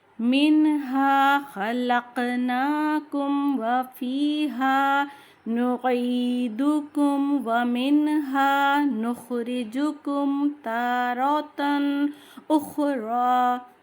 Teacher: اس میں میم ساکن کے بعد واو آیا ہے زیادہ تر، تو ہم نے تا آیا ہے میم ساکن کے بعد، تو ہم نے کہیں پہ بھی غنہ نہیں کرا ہے، میم کی آواز کو اظہار کرا ہے